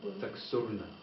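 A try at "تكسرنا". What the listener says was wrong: Put a kasra under the scene. So the scene always, for all of them, will have a kasra.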